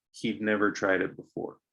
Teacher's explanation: sometimes it's really hard to hear that contracted d but it's there nonetheless